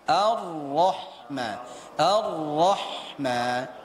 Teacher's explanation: jadi apabila kita jumpai ro itu dalam keadaan berbaris di atas Ah ditambah lagi dia dengan tasdidnya maka kita baca dengan tebal